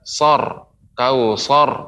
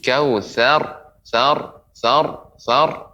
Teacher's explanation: Jadi terus berlatih Bu ya, catatannya ya, ra yang berada di akhir sebelumnya harokat fathah maka dibaca tebal, tapi perlu diperhatikan yang tebal huruf ra-nya, bukan huruf sebelumnya. Misalnya huruf tha ya, maka tidak sor, kausor, tapi kausar, sar ya, ra-nya yang tebal.